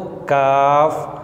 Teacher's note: और मखरज नंबर 6 है, जहाँ से क़ाफ़ अदा होता है उससे ज़रा मुँह की जानब हट कर ये लफ्ज़ काफ़ अदा होता है